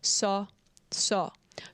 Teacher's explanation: the A with the little thingy on top, it's more like between A and O.